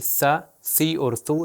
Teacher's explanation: سا، سی اور سو تینوں کے اندر میں نے اپنی زبان کو اوپر اور نیچے والے دانتوں کے درمیان میں لے کر آئے۔